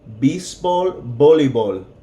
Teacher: V and B sound exactly the same.